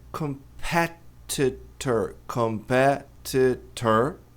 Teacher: Mas a tônica é no PE.